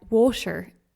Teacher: So for the word water, we might almost pronounce it like water, more of an sh sound in the middle of that word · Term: soft t sound